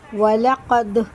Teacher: جب ان کو پڑھتے ہیں تو ان کے مخرج ٹکر کھا کے الگ ہو جاتے ہیں اور ٹوٹتی ہوئی آواز سنائی دیتی ہے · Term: قلقلہ